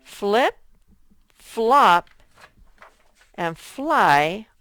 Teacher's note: hey flip flop and fly all begin with f l and f l is a blend we can hear both the f and the l sound when we blend them